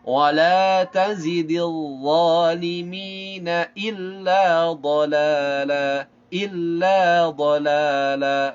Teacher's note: dzal dha, lidahnya keluar sedikit, zai tak keluar lidahnya ya. Wala tazidil zalimina illa dhalala, illa dhalala, la 2 harakat, la-nya lagi juga sama 2 harakat.